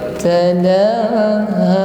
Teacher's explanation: La dengan ha panjangnya sama, satu alif, dua harokat atau sama-sama satu ayun.